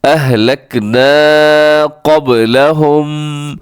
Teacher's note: اہلکنا کو آپ نے تھوڑا سا لمبا کرنا ہے کیونکہ اس میں الف ہے اور الف سے پہلے زبر ہو تو الف یہاں پر بھی آپ نے لمبا کرنا ہے.